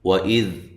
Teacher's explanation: وَإِذْ حمزہ کو تحقیق سے، واو کو ہونٹوں کو گول کرتے ہوئے۔